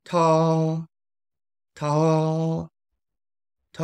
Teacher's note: She or her is going to be first tone. It's at level five. It's relatively high, but it is flat.